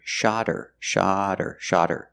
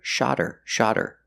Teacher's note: When you hear they shot her the bird, the T changes to a fast D because the H in her is silent because her is not a stressed word.